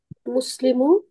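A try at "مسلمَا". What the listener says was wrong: একটু টান দিয়ে বলবেন, মুসলিমা,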